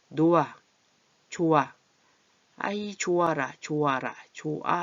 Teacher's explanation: 히읗이 이런 자음을 만나면 이게 거센 소리가 되지만 이응을 만나면 같이 목구멍 소리이기 때문에 얘는 아예 소리가 없어져요. 히읗이. 그래서 노아, 좋아, 아이 좋아라, 좋아 이렇게 돼서 히읗이 소리가 안 나요.